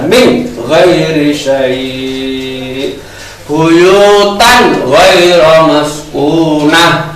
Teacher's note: setiap nun sukun atau tanwin ketemu ghin tidak mendengung karena ini bacaan idhar